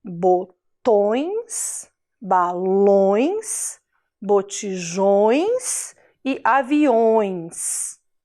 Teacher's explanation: como se a gente falasse com um tom fanhoso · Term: som nasal